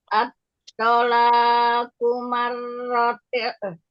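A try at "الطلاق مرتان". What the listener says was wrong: La-nya sama tobinya kepanjangan yang at-tolaqu marrotan.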